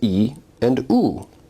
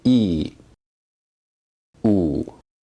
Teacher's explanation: if you say these vowels in succession you may notice that your tongue is moving forward and backward as you say e u in terms of backness vowels are